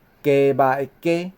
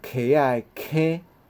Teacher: 所以呢头前即个无送气，后壁即个有送气溪甲鸡的差别